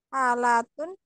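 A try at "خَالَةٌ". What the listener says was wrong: Kho dia lebih kho kurang titik.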